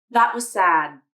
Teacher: the d sound inside was unreleased